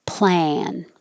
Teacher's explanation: Your jaw is very low, your tongue is very flat.